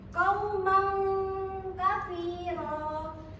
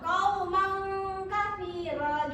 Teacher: Ifa itu samar dan mendengung. Cara bacanya ifa ini samar anak-anak dan juga mendengung, gabungan antara samar dan juga dengung.